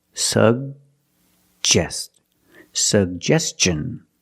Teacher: The first G is a hard G sound, sug. And the second G is the J sound, like juice and jump.